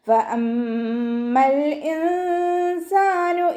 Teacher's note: ഹംസ അഖ്സൽ ഹൽക്കിൽ നിന്നാണ് വരുന്നത്